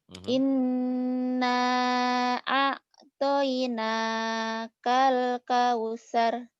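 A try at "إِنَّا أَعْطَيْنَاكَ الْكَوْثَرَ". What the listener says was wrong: Ainnya matinya belum dapat tuh. Inna a'tainakal kautsar. Ainnya ya nanti dilatih.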